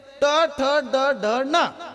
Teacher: दाताच्या वरच्या बाजूला खरबडी जागा आहे, त्याच्या मागे टाळू आहे. ट म्हणत असताना जीभ अशी उलटी फिरते आणि जिभेचा शेंडा टाळूला लागतो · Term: मूर्धन्य वर्ण